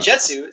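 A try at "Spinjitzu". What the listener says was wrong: you said jetsu not jutsu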